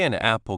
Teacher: To move from that N place to the place for apple is a very small smooth move. The N sound naturally goes into the vowel sound. It's less work for the mouth.